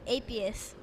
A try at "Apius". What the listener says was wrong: Apius. The accent is on the second half. And it's right after war, so it's like, you say the war.